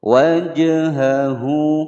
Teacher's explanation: hak domir menyandang harokat domah berdiri, dibaca panjang dua ketukan, hukum bacaan mad silah qasirah karena dia di depannya tidak bertemu dengan hamzah.